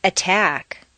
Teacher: Top of the staircase. When a T is at the top of a staircase in a stressed position, it should be a clear, popped sound.